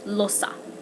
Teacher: In Choctaw, it's usually more of an ah sound, or an ah sound.